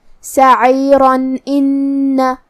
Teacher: ہم یہاں تنوین ظاہر کریں گے اور اسے نون ساکن پڑھیں گے اور بغیر غنہ سے یہ حکم کو ادا کریں گے